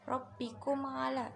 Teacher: mim sukun bertemu dengan ain, itu idhar syafawi karena ain itu huruf selain mim dan ba, dibaca jelas